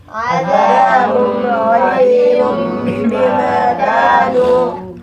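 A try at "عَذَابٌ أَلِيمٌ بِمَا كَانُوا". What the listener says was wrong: عذاب کے اوپر غنہ نہیں ہوگا، یہاں اظہار ہوگا.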